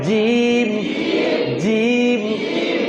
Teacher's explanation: জিমের উচ্চারণ জিবের মাঝখান উপরের তালু